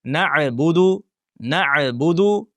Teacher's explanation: ayn harfini sukunli holatda tebratib, ya'ni o'sha qalqala qilib talaffuz qilib qo'yish